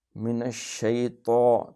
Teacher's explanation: تفشی ہوتا ہے، شین میں پھیلاؤ